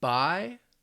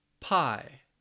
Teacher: All right, so remember, the B, your mouth is in the same position. The only real difference, one's voiced, one's a voiceless sound.